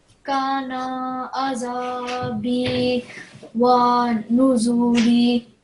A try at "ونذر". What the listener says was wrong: When you're pausing, do you know how you pause on a word which carries a kasra at the end? So it will just take a sukoon, so it will be wanuzur. Just read the final word, wanuzur.